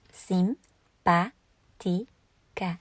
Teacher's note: the stress falls on the second syllable, not on the next to the last syllable